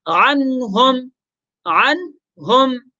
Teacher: اب دیکھیں عنہم، وہی نون ساکن کے بعد حروف حلقی میں سے ہا، حروف حلقے والا حرف آ گیا تو غنہ نہیں ہوگا. نون کو ظاہر کر کے، واضح کر کے بغیر غنہ کے پڑھیں گے